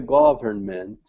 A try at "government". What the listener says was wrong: Okay, usually when we say government, we do not pronounce, hold on, let me highlight it. We don't need to pronounce this in. So it's just government.